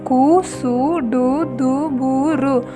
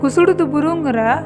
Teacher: இந்த 6 வல்லின எழுத்துக்களோட உகரம் சேர்ந்தா கு சு டு து பு ரு, குசுடு துபுரு உருவாகுது. குசுடு துபுருங்கிற 6 வல்லின உகரங்களும் அரை மாத்திரை அளவே ஒலிக்கும்.